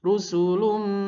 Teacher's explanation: dengung harus pastikan konsisten 3 ketukan. 3 ketukan kalau dihitung mulai masuknya. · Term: idgham bi gunnah